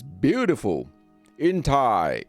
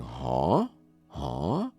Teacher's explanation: it's a rising tone like you're saying huh huh